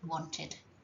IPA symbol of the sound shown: ɪd